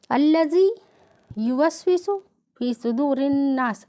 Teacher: الذی میں زال کا مخرج زبان کی نوک سامنے کے دو دانتوں کے کنارے سے لگا کے ادا کیا گیا ہے